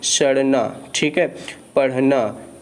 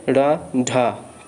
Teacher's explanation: तो आप ज़रा इसका उच्चारण करिए, आपको पता चल जाएगा कि जीभ जो है एक बार ऊपर उठ रही है और झटके से नीचे आ रही है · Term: उच्छिष्ट व्यंजन